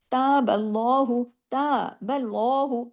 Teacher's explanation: अल्लाह के नाम में लाम को हैवी कर दिया। इस रूल को कहते हैं लाम जलाला